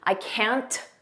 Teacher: Notice we don't push out that T. I can't. Just don't push it out.